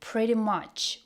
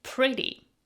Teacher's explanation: The T sounds like a soft D, flap T, not pretty, but pretty.